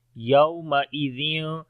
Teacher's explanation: یہاں پر واو لین ہے، نرم پڑھیں گے